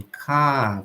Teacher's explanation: no non-rhotic, a gente tem esse som final, o R não tem som, e esse A ele fica mais longo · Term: non-rhotic accents